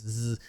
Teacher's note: Tongue doesn't touch. The tongue position is exactly the same as the S, no touching. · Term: Z sound